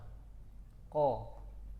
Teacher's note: Qaf tertahan nafas, tertahan suara.